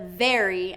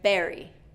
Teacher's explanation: So what's happening, instead of that V sound and that teeth, your teeth coming on your bottom lip, I'm hearing a b. So the lips are coming together.